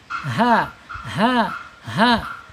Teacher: Makhrajnya ada di tenggorokan bawah.